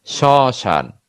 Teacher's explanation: শব্দের শুরুতে ব ফলার যেমন উচ্চারণ হয় না, ঠিক তেমনি শব্দের শুরুতে ম ফলারও উচ্চারণ হয় না, তবে আশ্রয়ী ব্যঞ্জনের স্বরধ্বনিকে কিছুটা সানুনাসিক করে, মানে কি নাকের একটু প্রভাব থাকে উচ্চারণে, নাসিক্য একটা ভাব থাকে।